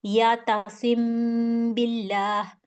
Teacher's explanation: थोड़ी देर के लिए 2 सेकंड के लिए मैंने इसको रोका और अपने होंठों में इस मीम को छुपाया, छुपा के फिर मैंने बिल्ला पढ़ा। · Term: मीम साकिन